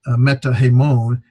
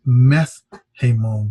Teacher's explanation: The tau changes to a theta, as well as that alpha drops.